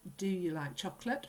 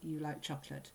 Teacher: your voice goes up at the end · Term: rising intonation